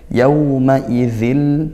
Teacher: tanwin bertemu lam idgham bila gunah masuk tanpa dengung.